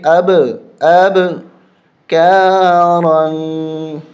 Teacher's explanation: یہاں پر قلقلہ ہوگا، یعنی جھٹکا دیں گے